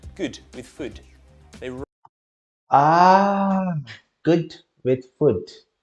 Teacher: the oo and uh vowels are the same